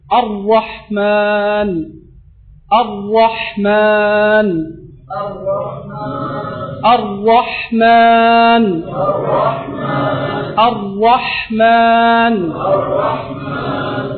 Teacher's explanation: ஃபத்ஹா வந்தா அல்லது பம்மா வந்தா நாங்க எப்படி ஓதுவோம் ராவுக்கு மேலால அல்லது ராவுக்கு முன்னால ஃபத்ஹா அல்லது பம்மா வந்தா நாங்க எப்பவும் மொத்தமாகத்தான் சொல்லுவோம் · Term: ரா என்ற ஹர்ப்